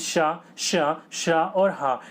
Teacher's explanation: जिन वर्णों का उच्चारण करते समय जो वायु हो होती है वो तेज गति से ऊष्म होकर निकलती है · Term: ऊष्म व्यंजन